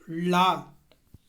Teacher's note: நாவின் நுனி மேல்நோக்கி வளைந்து வருவதால் நமக்கு லகரம் சிறப்பு லகரம் பிறக்கிறது